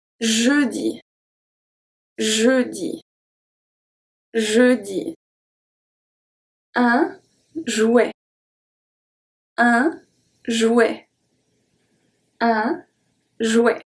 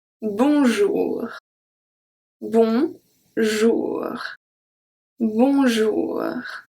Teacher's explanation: So for your tongue, it's going to touch the palate. The tip is going to touch the palate, not the teeth. The air goes through your mouth. This is not nasal sound. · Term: soft J